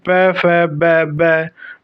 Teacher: जिन व्यंजनों के उच्चारण में दोनों ओष्ठों द्वारा श्वास का अवरोध होता है, ओष्ठ्य व्यंजन कहलाते हैं